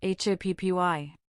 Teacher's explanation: happy has stress on the first syllable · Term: syllable stress